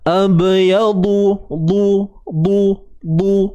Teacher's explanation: Okey, bahagian garham dia akan disandarkan. Bahagian tepi lidah kita ni akan memberikan tekanan pada bahagian garham kita, sama ada kiri ataupun kanan, mengikut pada seseorang itulah. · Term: Huruf dad